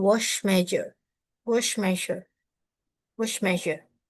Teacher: Both sounds are produced by pushing air through the narrow space near the roof of the mouth, just behind the alveolar ridge. The only difference is that J uses vocal cord vibration, while Sh does not.